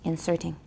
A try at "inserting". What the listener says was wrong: No, it's not Z, it's S.